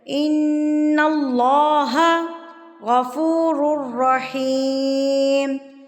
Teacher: اللہ سے پہلے اگر زبر آ جائے تو اللہ لفظ ہمیشہ پر کر کے پڑھا جاتا ہے، را کے اوپر زبر ہو تو را بھی پر پڑھی جاتی ہے۔